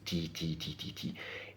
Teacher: c'était la langue qui était juste, derrière les dents, sur la bosse du palais